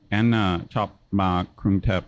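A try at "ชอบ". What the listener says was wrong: Okay, so this is another vowel length. I won't spend a lot of time on it, but just make sure for the word to like, chop. It's long. Chop. Listen how fast yours was.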